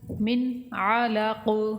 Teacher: من علق، ادھر نون ساکن کا اظہار ہوگا، نون ساکن کے بعد عین حروف حلقی میں سے ہے، حروف اظہار میں سے ہے، تو نون کو ظاہر کر کے پڑھیں گے · عین کا آپ نے مخارج صحیح ادا کرنا، حمزہ نہیں پڑھنا، اگر آپ الگ پڑھیں گے تو یہ حمزہ کی آواز ہوگی اور اس کا معنی بھی بدل جائے گا۔